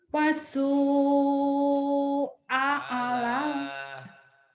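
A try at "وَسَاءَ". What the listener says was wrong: alah Waso, jangan wasu. Wasu nyamber.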